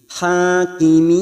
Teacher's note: karena ini ayat terakhir maka ujungnya kita turunkan nadanya. Hakimin, kita panjangkan 4 harokat mat arid li sukun.